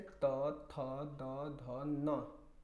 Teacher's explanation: ठीक है, तो देखिए तो जब बोल रहे हैं तो आपका जीभ क्या हो रहा है? दांत में सट रहा है